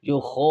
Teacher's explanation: ایک خا خود موٹا ہے اور دوسرا کھڑی زبر الف مدہ کی آواز دیتی ہے، تو یہ دونوں حرف موٹے ہو جائیں گے، یو خو۔